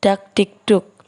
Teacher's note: Aspirasi, yaitu bunyi sertaan yang dihasilkan dengan cara arus udara yang keluar lewat mulut terlalu keras sehingga terdengar bunyi sertaan H yang dilambangkan dengan H kecil di atas dalam bunyi kardinal, contohnya dak dik duk.